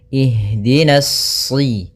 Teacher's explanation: pada lafal ha, usahakan di sini mengalir nafasnya dan lembut. Ada namanya jaroyanu an-nafas.